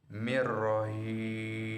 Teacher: Huruf nun mati bertemu dengan ro, maka dibaca dengan lebur tanpa dengung. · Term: idgham bila gunnah